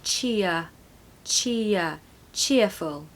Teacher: r of course it's more like a yes sound so cheer it's actually a bit of a schwa sound in the middle